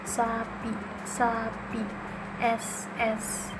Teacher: ujung lidah mendekati alveolar ridge tanpa menyentuh, udara keluar dengan gesekan